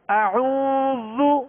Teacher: عین واو پیش عو، یہاں واو مدہ ہے لہذا ایک الف کی مقدار میں کھینچنا ہے